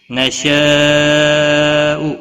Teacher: نشاء بڑی مد ہے، مد منفصل 5 الف کے برابر کھینچ کر پڑھیں گے۔